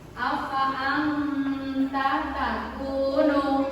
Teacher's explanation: Pembacaannya samar, disertai dengan nun ditahan sebentar, kira-kira 1 alif atau 2 harokat